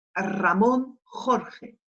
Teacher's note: Alors, Ramón avec le R qui va être doublement roulé et Jorge qui va enchaîner une J, un R roulé et une autre J.